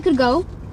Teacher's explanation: Another case of assimilation is the change of the voice alveolar plosive for the voice velar plosive in could go.